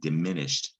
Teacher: to get the past tense verb diminished you don't hear shed you don't hear the e of the e d and diminished and you also don't hear d